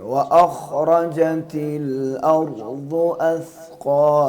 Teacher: خا اور را کو پر پڑھیں گے